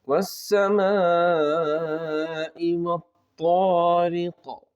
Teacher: یہاں پر سب سے پہلے ہم کو مد ہے، مد کو کھینچنا ہے 3 الف تک، اس کے بعد آگے طا جو ہے اس کی ادائیگی پر دھیان دینا ہے، آخر میں قلقلہ ہوگا، جیسے اکو ٹائپ میں آواز آئیں گی